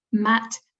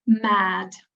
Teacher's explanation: in the word mat, M-A-T, the vowel in the middle, the A, is shorter than the vowel in mad, where it has a voiced consonant at the end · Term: vowel length